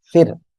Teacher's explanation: র যদি সাকিন থাকে যদি তার ডাইনে জের থাকে চিকন করে পড়তে হবে